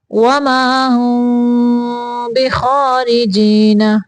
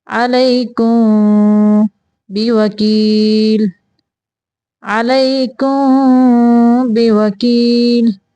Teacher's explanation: تو یہاں پہ بھی میم میں ہم میم دونوں ہونٹوں کو آپس میں ملائیں گے نہیں، تھوڑا سارا گیپ دیں گے، پھر ہم اخفا ادا کریں گے.